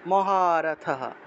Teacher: কি তাহলে বিরাটস দ্রুপদশ্চ মহারথহ মহারথ বিসর্গ থাকায় হ উচ্চারণ মহারথহ কোন একটা লাইনের একদম শেষে বিসর্গ থাকলে সেই বিসর্গের পরিবর্তে পূর্ণরূপে হ উচ্চারণ হয়